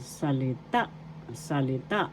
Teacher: First syllable sa, second syllable li, third syllable ta. Ta, third syllable is where the accent is.